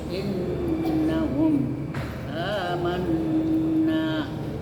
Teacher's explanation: nun bertasdid wajib membacanya dengan mendengung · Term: gunah